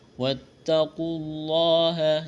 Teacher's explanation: ہے، واتقوا اللہ، یہاں واو اور الف کو نہیں پڑھیں گے، لفظ اللہ کے نام سے پہلے پیش ہے، لفظ اللہ کے نام کو موٹا کرنا ہے